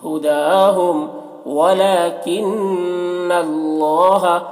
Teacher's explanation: نون مشدد ہے تو نون میں غنہ کریں گے · اور اللہ کا لام پر ہوگا کیونکہ اللہ کا لام سے پہلے زبر ہے